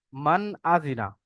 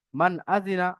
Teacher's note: নুনের উপরে সাকিন এসছে, নুন সাকিনের পরে হরফে হালকি ছটি অক্ষরের মধ্য থেকে হামজা এসছে, তাই নুন সাকিনকে বিনা গুণনায় জাহির করে পড়বো।